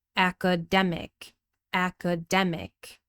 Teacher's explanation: Now the third syllable is stressed, so we pronounce the full vowel sound here with a short e, demic. Also, the vowel in the second syllable changed. · So the vowel in the second syllable changed. It's not ka anymore, it's k. Unstressed with a schwa sound.